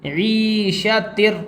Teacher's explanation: عین کو حلق سے نکالیں گے